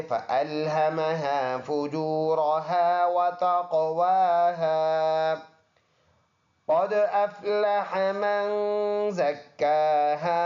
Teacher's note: دال میں قلقلہ ہے قاف موٹا حرف ہے